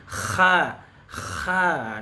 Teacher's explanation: kita ha dulu nah ha kesalahan pada huruf Ha ini adalah ketika Antum ngucapin huruf ha tapi ada ngoroknya dikit loh atau ada getarannya k Kha ini salah nih ya Kha ada getarannya ketika ucapin